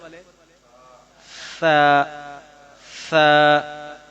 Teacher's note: زبان کی نوک اوپر سامنے والے دو دانتوں کے کنارے سے ادا ہوتے ہیں.